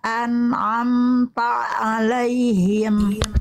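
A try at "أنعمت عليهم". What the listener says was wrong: Ta jangan masuk Ain dulu Ta Ta dulu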